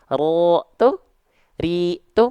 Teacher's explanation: sifatnya takrir bergetar tapi enggak terlampau banyak-banyak